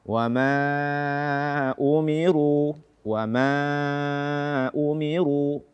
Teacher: membaca mad jaiz munfasil kurang dari 4 harakat